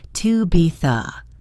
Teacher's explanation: The words to be the are spoken very quickly and without stress.